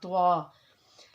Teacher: तो का मखरज क्या है, नोक ज़बान और स्नाया उलिया की जड़ें, लेकिन त्वा उरूफ मुस्तालिया मोटे उरूफ में से है, लेकिन त्वा को अदा करते हुए हम होठों को गोल नहीं करेंगे।